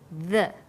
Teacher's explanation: when you say the, your tongue is between your top and bottom teeth, like this, the.